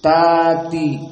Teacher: ta'ti hamzahnya dihapus diganti dengan mad. Nah, di sini ta'ti hamzahnya dalam keadaan alif yang sesuai dengan dalam keadaan fathah, ta'ti qablahu ta fathah. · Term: mad tabi'i